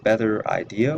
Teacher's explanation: similar to The New Yorker accent the southern accent is non rotic